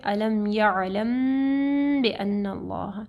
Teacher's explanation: تو علم یعلم میں دیکھیں میم ساکن کے بعد با ہے، ٹھیک ہے، تو یہاں پہ اخفاء الشفوی آ رہا ہے، غنہ ہوگا